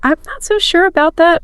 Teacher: For polite disagreement, you'll often hear a slight sort of falling rising tone or maybe just a softer volume